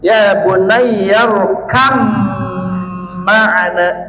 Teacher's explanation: Tah teh hartosna ngaidghamkeun ba kana mim. Upami tos diidghamkeun semu-semu bana ical langsung kena mim